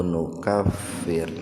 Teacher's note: Fir tarkik, ro sukun didahului kasroh, jadi dibacanya tipis